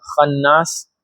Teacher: So ghunna is the nasal sound from our nose, and we have to stay on the ghunna for 2 beats.